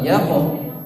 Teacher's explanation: yaqo qafnya mantul. Yaqo mantul tebal, mantul tebal.